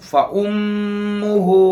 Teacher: یہاں میم مشدد ہے، ایک الف کے برابر غنہ کے ساتھ پڑھ کر آگے جائیں گے.